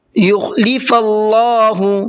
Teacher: اللہ کے لام کو منہ بھر کے پڑھیں گے